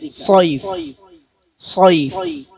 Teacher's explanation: അതുപോലെ സ്വാദ് ഉച്ചരിക്കുമ്പോ സ്വൈഫ് എന്ന് ചുണ്ട് കൂർപ്പിച്ച് ഓതരുത്. എന്നാൽ നാവിന്റെ പിൻഭാഗവും മധ്യഭാഗവും മേലോട്ട് ഉയർത്തി കനപ്പിച്ച് ഉച്ചരിക്കുക. സ്വൈഫ്, സ്വൈഫ് എന്നാണ് പാരായണം ചെയ്യേണ്ടത്.